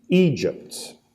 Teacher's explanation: the name has 2 syllables and that the emphasis is on the first syllable